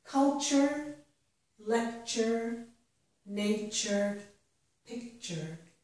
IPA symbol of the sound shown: tʃ